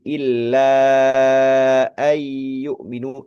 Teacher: panjangnya illa yang bertemu dengan hamzah pada kata an gitu ya di situ hukumnya adalah mad jaiz munfasil